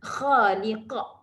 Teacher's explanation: Kha tadi mad asli, qa itu qalqalah kubra.